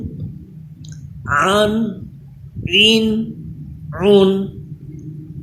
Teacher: عین پہ تھوڑا زور دے کے حلق کے درمیان والے حصے سے اس کو پڑھیے